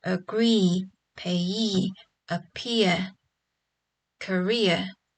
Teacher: the words like agree, payee, appear, career will all have stress on the last syllable as well